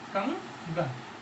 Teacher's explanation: कंगन में आप देखेंगे इस अनुस्वार का जो उच्चारण होगा वो इस ग जो कि कंठ वर्ग का है के कारण अंग हो जाएगा। ये हो जाएगा कंगन।